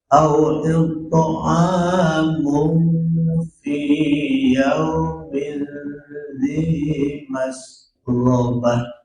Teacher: It'amunya agak sedikit lama ya, ikhfanya it'amu 2 harkat paling tidak